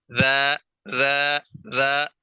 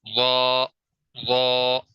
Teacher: ذال کو بالکل باریک کر کے پڑھیں گے، وا کو پر کر کے موٹا کر کے منہ بھر کے پڑھیں گے